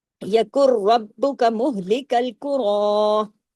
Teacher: را ہیوی بھی ہوا، را الف کے برابر کھینچا بھی اب کھڑی زبر کی وجہ سے